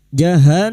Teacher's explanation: Nun yang bertasdid ghunna musyadada kita dengungkan selama tiga harakat.